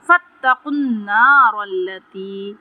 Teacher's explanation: قاف پر تفخیم کریں گے اور قاف کو نون سے ملائیں گے ، نون مشدد ہے، یہاں پہ غنہ کریں گے ایک الف